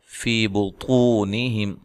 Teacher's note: طا کو موٹا ادا کریں، و مدہ ہے